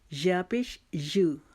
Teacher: زبان کا درمیان اور تالو کے درمیان ہم یا ادا کریں گے، اور یا ادا کرتے ہوئے ہماری آواز پورے منہ میں پھیلنی چاہیے.